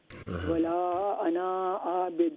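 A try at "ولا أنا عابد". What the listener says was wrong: ولا انا جو ہے نون کے اس کو انا کو لمبا نہ کرے. نہیں ولا انا عابد.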